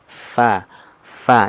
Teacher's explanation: memiliki sifat hams nah Hamas itu apa mengeluarkan nafas